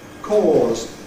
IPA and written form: kɔːz (cause)